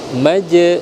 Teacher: Jim itu ada Qalqalah Sugra kita pantulkan